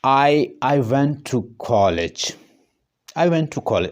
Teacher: अगर मैं कॉलेज के ऊपर स्ट्रेस दे रहा हूँ या उसको मैं राइज कर रहा हूँ अपनी टोन, तो ये जस्ट कॉलेज की बात हो रही।